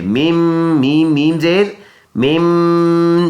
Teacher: ناک میں آواز لے کے جائیں گے ایک الف کی مقدار